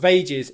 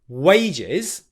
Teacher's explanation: make sure you're making a W sound, ooh, and not a V sound where your bottom lip is touching the top teeth